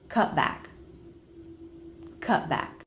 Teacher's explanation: If the next word begins with a consonant, then a stop T will sound great here, like in the phrase cut back, cut back, cut, stop the air, cut back, cut back. You don't release the T, you don't hear a T sound. What you hear is an abrupt stop.